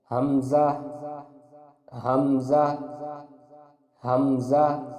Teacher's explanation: حمزہ کے مخرج کی ادائیگی حلق کے نیچے والے حصے سے ہوتی ہے